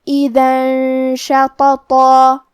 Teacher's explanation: کلمت شططا میں 2 تو ہے، تو ہمیں یہ دونوں تو کو تفخیم سے مطلب بھاری آواز میں پڑھنا ہے، اور آخری میں مد الف ہے تو ہم مد الف کو بھی بھاری آواز میں ادا کریں گے۔ · کلمت اذن میں دال پہ تنوین زبر ہے، پھر حرف الشین ہے۔ کلمت شططا، شین حروف الاخفاء میں سے ہے، تو ہم یہ حکم کو غنہ کے ساتھ ادا کریں گے۔